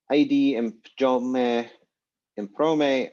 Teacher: it becomes m before the p in prome like always